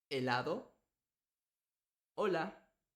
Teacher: La H es muy fácil porque es totalmente silenciosa. No tiene sonido. La H con la A es A.